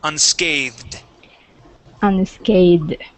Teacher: we have the voiced th with the Ed ending